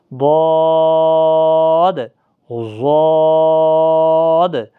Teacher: زبان کی کروٹ اور اوپر کے دہاڑوں کی جڑ،